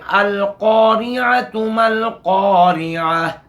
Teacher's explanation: बहरहाल क़ाफ मोटा पढ़ा जाएगा क्योंकि मुस्तालिया में से है।